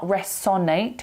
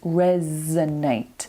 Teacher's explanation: resonate with a z sound not an S